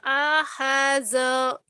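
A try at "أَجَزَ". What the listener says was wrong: Ini Jim. Titiknya di bawah. Ajaza.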